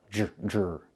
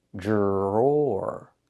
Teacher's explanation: The DR makes a J sound like in juice and jump. Plus the R, jr.